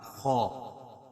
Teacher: خا اس طرح کر کے خا ادا نہیں کرتے ہیں، خا کو پر پڑھیں گے اور منہ جو ہے کھل کر ادا ہوگا